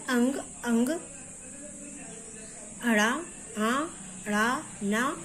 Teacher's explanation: ये नासिका से बोले जाते हैं, इनका उच्चारण स्थान है नासिका और इनका वर्ग का नाम है नासिक।